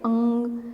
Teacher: अनुनासिक कहते हैं जिसमें नासिका के साथ में हम कंठ का भी प्रयोग करते हैं